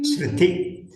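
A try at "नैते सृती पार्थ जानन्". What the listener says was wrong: நெடுல்தான் இருக்கு.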